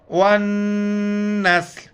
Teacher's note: وَالنَّسْلَ تو جب ٹھہریں گے، وَالنَّسْلَ، لام کا جو زبر ہے پڑھا نہیں جاتا ہے، صرف لام کا آخر میں ساؤنڈ آتا ہے